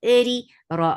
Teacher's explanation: whenever ra is with kasra, it is light, and give a little vibration in it.